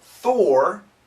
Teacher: Thor, it's an aspirated, lots of wind. Thor, it's not vibrated.